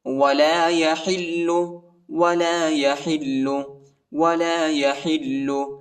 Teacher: حا کو لام کے ساتھ ملائیں گے اور لام کو شدت کے ساتھ سختی کے ساتھ پڑھیں گے